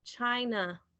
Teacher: So the A at the end of the word is the schwa sound